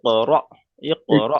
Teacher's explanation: হামজা সাকিনকে একটু ধাক্কা কিংবা ঝটকা দিয়ে পড়তে হয়